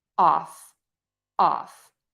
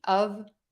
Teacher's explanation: Off has a very open O and the F sound, which means that's unvoiced.